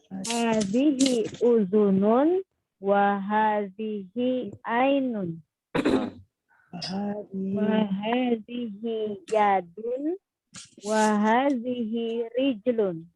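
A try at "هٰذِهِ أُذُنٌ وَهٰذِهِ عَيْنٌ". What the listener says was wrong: Masya Allah. Ahsanti qiraah jamilah.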